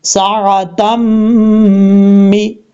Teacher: दो ज़बर के बाद जब भी मीम आता है तो वहाँ पे इदगाम यार मलून होता है।